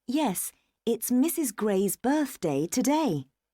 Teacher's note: Gray's birthday today distressed syllable in the word today is day so the intonation goes up on the stressed part